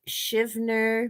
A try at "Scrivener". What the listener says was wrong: Scrivener. There's an R. The R in there.